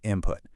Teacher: So why does the N sound turn into an M sound?